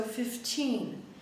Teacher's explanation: Not that much higher in pitch and louder, maybe, because when we say numbers, oftentimes we don't exaggerate the number that much. But you should hear a longer syllable for teen. Okay? So 15. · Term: stressed for the teen